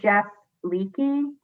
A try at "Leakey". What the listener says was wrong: It's a silent E, just Leak.